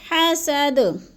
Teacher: حسد کی دال جو ہے وقف کی صورت میں ساکن کر کے پڑھیں گے، جزم لگا کر، اور تھوڑا سا ہم نے اس پہ قلقلہ بھی کرنا ہے، ہلانا ہے اس کو.